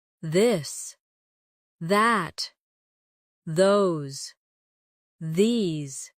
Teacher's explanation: the softer version of th where you let your tongue touch your teeth lightly, but use your voice